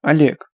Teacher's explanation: Что-то между О и А. Что-то нейтрально. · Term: стоячая О